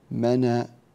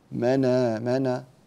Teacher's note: هذه الهمزة إذا صادفت قبلها نون ساكنة فإننا ننقل هذه الحركة إلى الساكن منا، ثم تسقط الهمزة منا منا.